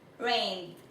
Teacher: Aquí tenemos rain, que en pasado sería rained. Esta termina en un sonido fuerte, entonces la ed se pronunciaría como D.